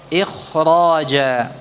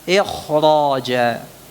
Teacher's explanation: karena ada huruf ra yang secara tidak langsung menjadikan pengucapan kha-nya lebih kuat